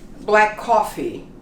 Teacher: we do not double sound the ck and the c